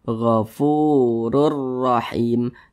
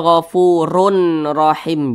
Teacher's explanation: Cara membacanya itu dengan cara memasukkan tapi dia tidak berdengung. Dimasukkan dengan tidak disertai dengungan. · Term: idgham bila gunnah